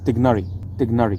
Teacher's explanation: with a G and the rolled r with an r and making the vowels in the middle of the name short and narrow